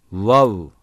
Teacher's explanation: dudakların uçlarını birbirine dokundurmadan ileri uzatarak çıkarılır